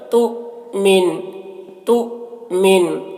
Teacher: شکل میں ہے اور حمزہ کے اوپر جزم ہے تو حمزہ ساکنہ کے پڑھنے میں جھٹکا ہوتا ہے، یہاں پر جھٹکا لگائیں گے